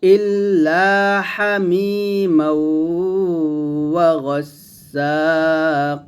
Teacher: মাউ ঠোঁট গোল করে গুণ করবেন